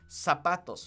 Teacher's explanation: Remember that in Spanish, we don't pronounce our Z's like Z's, okay? They're pronounced like S's, okay? So it's zapatos, okay?